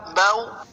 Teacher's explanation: حرف لین کو بغیر کھینچے، بغیر جھٹکا دیے نرمی سے معروف پڑھیں گے۔